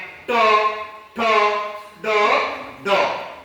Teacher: मूर्धन्य कोणते कोणते? म्हणजे जिभेच्या शेंड्यापासून उच्चार होणारे ट, ठ, ड, ड